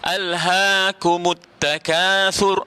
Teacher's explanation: Alhaakumut takatsur dengan tha, bukan dengan sin, bukan takasur, ada tha.